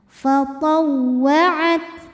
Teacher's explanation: Hams artinya keluar angin. Untuk ta yang sukun maka anginnya keluarnya terakhir setelah keluar suaranya. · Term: sifat hams